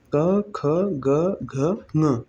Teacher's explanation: कु यानी कि क वर्ग, क, ख, ग, घ, ङ, ह और विसर्ग और विसर्ग, ये किससे उच्चारित होंगे? कंठ से।